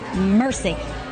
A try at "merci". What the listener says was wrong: It's not mercy. It's more like merci.